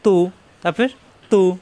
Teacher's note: জিহ্বার আগা উপরে দুই দাঁতের গোড়ায় লাগিয়ে উচ্চারণ